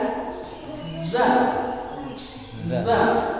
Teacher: Karena diawali oleh huruf Z, jadi harus jelas getarannya memang.